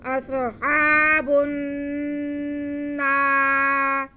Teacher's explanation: नून पे ज़बर है और साथ में अलिफ तो अलिफ मद्दा है, इसलिए हम नून को खींचेंगे। अस्हाबुन नार, अगर रा के नीचे ज़ेर है तो रा बारीक पड़ा जाएगा।